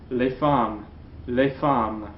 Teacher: In front of a consonant sound, the S is going to be silent.